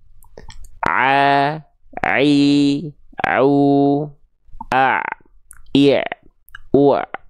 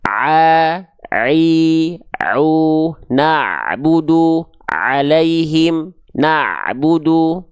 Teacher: huruf ain itu dilafalkan tepat dari bagian tengah tenggorokan kita, tepatnya pada bagian katup epiglotis